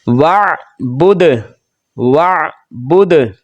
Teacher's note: دال حروف قلقلہ میں سے تھا تو اس پر آواز لوٹ کر آئی